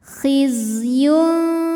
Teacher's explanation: Zainya berdesis karena punya sifat yang tidak memiliki lawan, yang dinamakan dengan sifat sofir. Artinya ada desisan, seperti suara lebah.